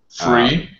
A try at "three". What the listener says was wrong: Three, the TH sound, voiceless TH.